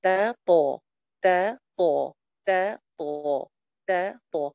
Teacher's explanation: اب ڈفرنس صرف اتنا سا ہے کہ تا کے مقابلے میں تو کی آواز موٹی ہے.